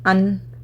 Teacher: ऊपर ज़बान की टिप लग रही है, राइट, अन तो ज़्यादा प्रेस कर रहे हैं, दैट इज़ व्हाट कॉल्ड गुन्ना।